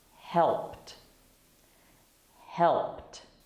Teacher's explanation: the ed sounds like a t always when you have an ed after a voiceless sound it's so help is a voiceless sound so it's i